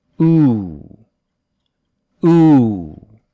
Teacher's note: because u is a tense vowel it is a little longer and for most english speakers the tongue rises while we say it